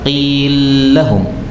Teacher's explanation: lam ketemu lam boleh idgham